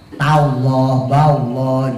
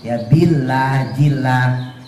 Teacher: Memang kan lafaz lo-nya itu kan tafkhim ya, tebal ya